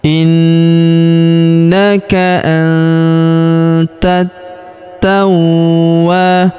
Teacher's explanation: Innaka antat tawwa. Huruf wa kita tahan dan kita tekan karena terdapat tanda tasdid di atasnya. · Huruf wa kita panjangkan dua harakat karena terdapat alif di depannya. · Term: tasydid